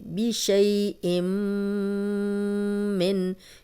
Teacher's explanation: یہاں تنوین کے بعد میم ہے, غنہ کریں گے